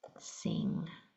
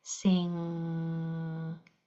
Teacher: But for the NG sound, the back of your tongue goes to the back of your throat, blocks off the air. So the air has to come through your nose.